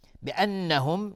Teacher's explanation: نون مشدد 2 حرکت غنه میدیم